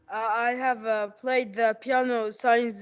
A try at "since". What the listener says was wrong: Since 2000, not science, okay? Since 2000.